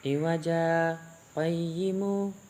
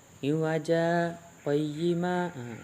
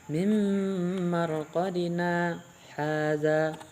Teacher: ketika kita membaca berhenti di iwaja, kita terdiam, bukan mengambil nafas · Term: saktah